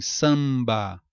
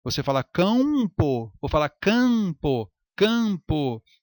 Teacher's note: Temos aí o dígrafo vocálico em samba. Apenas nasalizou a vogal anterior e esse M é letra diacrítica